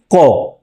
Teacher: স্বরতন্ত্রীর কম্পন মিশিয়ে উচ্চারিত হবে না। খুব স্বাভাবিকভাবেই সেটা উচ্চারিত হবে। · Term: অঘোষ ধ্বনি